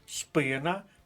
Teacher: спина наголос на перший склад